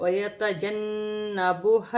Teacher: یہاں پر نون مشدد ہے، اس میں بھی غنہ کیا جائے گا